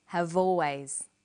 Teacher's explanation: in conversation we link the final consonant sound v with the initial vowel sound